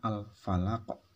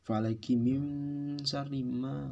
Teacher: Karena dia diteruskan maka itu tidak ada hukum bacaan qalqalahnya, tetapi karena diwaqafkan maka muncullah hukum bacaan qalqalah kubro, yaitu contohnya al-falaq seperti itu.